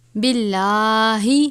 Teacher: لام سے پہلے زیر ہے، لام کو باریک پڑھیں گے.